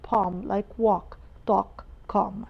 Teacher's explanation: Palm because it's a rule. A followed by L in the middle of the word makes the L silent.